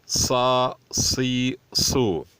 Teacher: ساد کی مخرج سین جیسی ہے، لیکن سین پتلی ادا ہوتی ہے، ساد موٹی ادا ہوتی ہے، اور اس کو اس طرح ادا کرنا چاہیے کہ سیٹی جیسی آواز نکلے۔ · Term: حروف صفیر